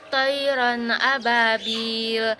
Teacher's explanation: Yang kedua itu ada hukum baca izhar halki pada tayran ababil, yang mana tanwin bertemu huruf hamzah. Cara baca tanwin dibaca jelas dan terang, tidak dengung. Hukum tajwid mad tabi'i pada kata ababil.